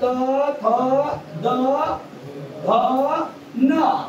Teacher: आपल्या जिभेचा टोक वरच्या दाताच्या मागील बाजूला जाऊन टेकेल जे आपल हिरड राहते वरच्या दाताचा या वरच्या दाताच्या मागील बाजूला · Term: दंतवर्ण